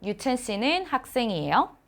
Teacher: So the sentence is same, but when your tone goes up, that's the question in Korean.